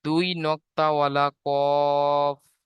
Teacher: 4 নম্বর মাখরাজ জিভের গোড়া এবং তার বরাবর উপরের তালুর সাথে লাগিয়ে উচ্চারিত হয়